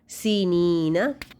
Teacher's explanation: या मद्दा, इसको आपने दो हरकत लंबा करना है लेकिन नून पे सिर्फ ज़बर है, इसको लंबा नहीं करेंगे।